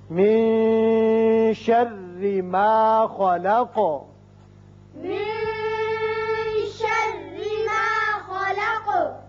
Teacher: نون پر اخفا ہوگا اور ایک الف کے برابر آواز یہاں ٹھہرے گی۔ شرری را باریک ہوگا، ما خلق خا پر ہوگا، قاف بھی، لیکن آیت ختم ہوتی ہے قاف ساکن ہو جائے گا اور پھر اس کی صفت قلقلہ ادا کریں گے۔